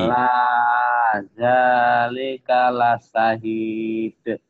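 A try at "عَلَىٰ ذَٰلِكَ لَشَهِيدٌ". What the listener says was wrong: Tinggal shinnya belum gede itu. Coba shinnya. Shin. Kalau la syahid ada double hurufnya. Ala zalika la syah la syah la bukan la syahid. Kalau la syahid sinnya dua. La syahid.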